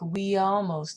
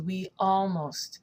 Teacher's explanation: anytime that she has a word that's starting with a vowel then she's stopping the air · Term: stop of the air